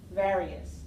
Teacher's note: So various, stressed on the first syllable.